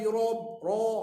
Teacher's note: Ra bila maftuhah dia kena mufakhamah, tebal, ataupun dia dhammah mufakhamah, ru. Tapi oleh kerana dia nak tebal, dia pergi gulung mulut.